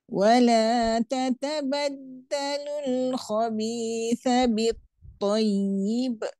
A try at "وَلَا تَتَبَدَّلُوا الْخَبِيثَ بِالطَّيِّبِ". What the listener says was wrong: Jangan tiba-tiba je cot dia naik kan. Wala tatabaddalul khabitha bittayyib.